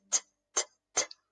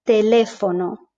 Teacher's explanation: we don't have this aspiration that English has, which means that sort of bit of air after we pronounce the T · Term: no aspiration